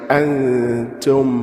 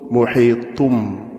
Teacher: there's a ghunna to it and two haraka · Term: ikhfa